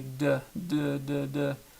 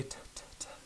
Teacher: A voiced consonant would be something like D, and a voiceless consonant would be something like T. Because you can hear that my voice is still working when I say D, D, D, D, but when I say T, T, T, my voice stops working and it's just the pure consonant by itself.